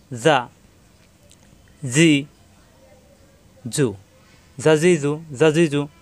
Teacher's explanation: জিহ্বার আগা দাঁতের আগায় নরম করে